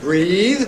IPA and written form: briːð (breathe)